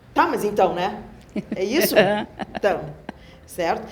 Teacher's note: a gente tem essa tendência de usar uma entonação mais incisiva, de... eu estou dizendo que é.